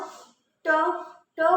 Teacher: बोलते वक्त हमारी जीभ फोल्ड हो, ठीक है, फोल्ड होकर के आगे की तरफ धक्का देती है। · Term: मूर्धा